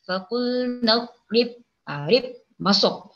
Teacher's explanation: Jadi kita ni membaca faqul nadrib rib masuk. Ba yang pertama masuk kepada ba yang kedua. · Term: al-mutamasilain